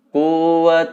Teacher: Bighunnah bukan Tin wa tapi tua dilebur masukkan ke huruf waktu-waktu ditahan 2/3 harokat juga didengungkan terasa mendengung di area hidung atas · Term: Idgham Bighunnah